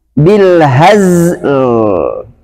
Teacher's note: Jadi zainya harus jelas bunyinya. Ada safirnya.